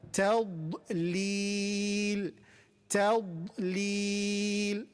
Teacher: Because we have a heavy letter and then it is surrounded with two light letters, right? We have the letter ta, which is light, then we have dad heavy, and then lam light. So light, heavy, light.